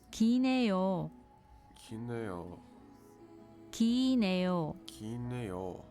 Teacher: Notice the change in the word for long. In front of 네요. the final L sound of 길. is dropped.